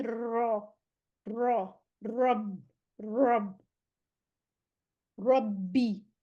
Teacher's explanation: آر کو پورے زور دے کے اس کی 2 دفعہ اس کی رولنگ ساؤنڈ آئے